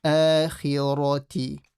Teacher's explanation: Khi, slightly full mouth. Ra, full mouth.